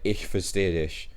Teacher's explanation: The V sound in German is actually pronounced as F.